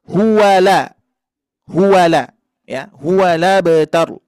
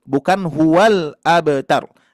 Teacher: Ya, jadi harokat hamzah dipindahkan ke harokat lam. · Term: memindahkan harokat hamzah ke lam